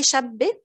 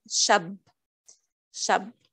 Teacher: It's actually geminated at the end. It has شدة.